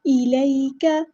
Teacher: کو لمبا نہیں کرنا، حرکات کو ہم لمبا نہیں کرتے۔ الیک، یا پہ ہماری مد لین ہو رہی ہے، ہمیں نرمی سے اس کو موڑنا ہے، الیک، کاف باریک ادا کرنا ہے، حرکات کو لمبا نہیں کرنا،